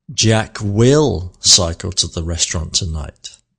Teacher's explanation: I have shifted or moved the emphasis onto will.